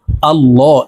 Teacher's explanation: এখানে আল্লাহ শব্দের আগের হরফে জবর আছে, তাই এই লামকে ল অর্থাৎ মোটা করে পড়তে হবে।